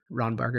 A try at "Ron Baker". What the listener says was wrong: Baker, not Barker. Baker.